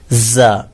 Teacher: خا زا, اسے زا پڑھنا ہے, جا نہیں پڑھنا ہے, یعنی زا جھنجھناتا ہوا زور دے کر زا